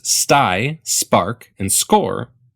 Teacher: letter S so in the words stai spark and score there's no puff these are unaspirated consonants